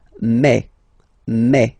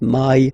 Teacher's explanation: French remember when you combine this a and then e vowels you get the sound e e so really open E